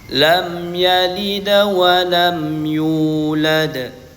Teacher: Mim sukun dibaca jelas tanpa ghunah dan tidak memantul. · Mim sukun dibaca jelas tanpa gunnah dan tidak memantul. Yalida wa, huruf dal di sini dibaca qalqalah sughra, memantulnya kecil, sedikit mantulnya.